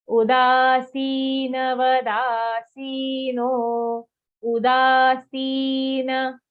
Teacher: Udasina, da dirgha, si dirgha, full na after that, not udasin.